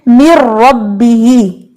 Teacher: مِن رَبِّهِ میں ادغام حقیقی بغیر غنہ آپ نے یہ سیکھا تھا نا، یعنی کہ ادھر غنہ کی صفت جو ہے وہ نہیں رہی، اور اگر غنہ کی صفت رہ جائے تو اس مین کہ یہ ناقص ہے، مکمل طور پہ مرج نہیں ہوا. تو مِن رَبِّهِ میں نون مکمل طور پہ را کے اندر مرج ہو گیا، اس لیے یہ ادغام کہلائے گا ادغام تام. ادغام صغیر کیفیت کے اعتبار سے تام ہو گیا، مکمل ہو گیا.